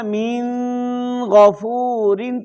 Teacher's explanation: اگر آپ کہیں گے نا من غفور تو یہ ناک میں آواز آپ لے کے گئے ہیں، تو یہ درست نہیں ہے۔ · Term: غنہ